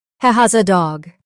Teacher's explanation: Did you hear that the S sound from has links into the A? That makes it flow faster and smoother.